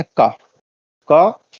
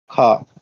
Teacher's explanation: का में थोड़ा कम जोर लग रहा है, खा में थोड़ा अधिक जोर लग रहा है